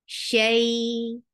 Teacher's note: Make it 2 counts long because this is harf leen.